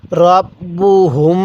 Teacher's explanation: এখানে এই নাকের বাঁশি দ্বারা গুনাহ করবো কারণ মিম সাকিনের পরে বা হলে সেখানে আমাদের গুন্নাহ করতে হয়